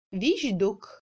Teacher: ch passe en j devant les consonnes sonores ayant une paire.